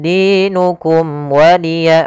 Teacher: ada mim mati bertemu dengan huruf waw, maka suara mimnya harus dibaca dengan jelas, tidak boleh tahan karena dia bertemu dengan huruf waw. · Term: izhar syafawi